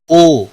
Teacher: واو مدہ ہے ایک الف کے برابر کھینچ کر پڑھیں گے